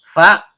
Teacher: Fa perut bibir yaitu perut bibir bawah bertemu dengan ujung gigi seri atas